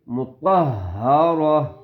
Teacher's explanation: اب دیکھو پھر میم مشدد آگے, غنہ ہوگا, صحفا مطهرة صحفا مطهرة تو موٹی ٹھیک ہے موٹی آواز کے ساتھ مطہرہ ٹھیک ہے اس کی آواز اور اس کی تا یہ گولتا ہے وقف کی حالت میں رکنے کی حالت میں یہ تا ہا بن جائے گی